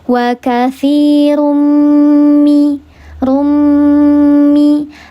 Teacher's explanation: Karena ada tanwin menghadapi salah satu huruf idgam ghunnah, yaitu huruf mim. Dileburkan, disertai dengan ghunah yang paling sempurna tiga harakat. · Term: idgham bighunah